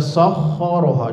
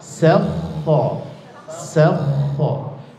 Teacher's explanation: Sinnya huruf tipis, kho-nya huruf tebal.